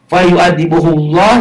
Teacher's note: lapad Allahnya dibaca tebal. Kenapa dibaca tebal? Karena sebelum lapad Allah baris di atas, domah. Fa yu'adibuhullah, lapad Allahnya ini tebal, tafkhim, taglid.